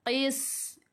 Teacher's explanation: Sin sifat hurufnya adalah sofir. Jadi kena berdesir, kena bunyikan s.